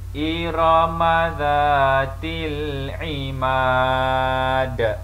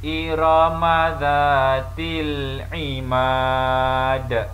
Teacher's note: Perlu diqalqalahkan atau diadakan lantunan suara kerana huruf dal apabila bertanda sukun atau ditukar kepada baris sukun, maka hendaklah dibaca mengikut kaedah qalqalah, iaitu terdapat lantunan suara